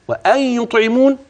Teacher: وأن يطعمون معاك الغنة، وهذا يسمى إدغام بغنة، نون ساكنة وبعده ياء. وانتبه للطاء، يطعمون والقلقلة، العين المكسورة، الميم، الواو، النون لا غنة فيها واضحة، فهي ساكنة لأجل الوقف.